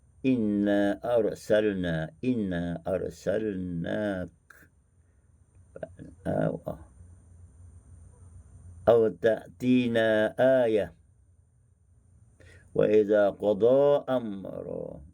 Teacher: setiap kali bertemu dengan mad munfasil, maka membaca dengan hanya 2 harakat sahaja.